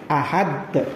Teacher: menekan kuat makhraj huruf qalqalah yang disukun atau diwakafkan tersebut sehingga lafadznya memantul dengan lebih berkumandang dan lebih jelas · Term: qalqalah kubro